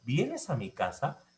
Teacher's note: Y en el segundo, vienes a mi casa, se conoce como inflexión tonal ascendente.